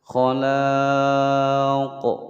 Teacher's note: Ada mad tabi'i ya bertemu dengan huruf hidup di akhir kalimat dan matinya karena diwaqafkan, maka boleh dibaca panjang 2 sampai 6 harokat, hukum bacaan mad arid lis sukun. Kemudian huruf qafnya ini dipantulkan karena qaf adalah salah satu huruf qalqalah, maka ketika waqaf di sini harus ada pantulan. Khalaq. Qalqalahnya adalah qalqalah kubra karena berada di akhir kalimat.